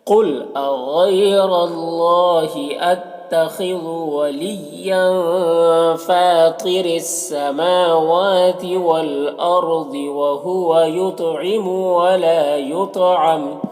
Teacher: والارضی، را کو پر پڑھیں گے، ضاد کو بھی پر پڑھیں گے، یہ بھی حروف مستعلیہ میں سے ہے۔ وہو یطعم، طا کو بھی پر پڑھیں گے، یہ بھی حروف مستعلیہ میں سے ہے، اور طا میں قلقلہ بھی کریں گے۔ ولا میں الف مدہ ہے، ایک الف کے برابر کھینچیں گے۔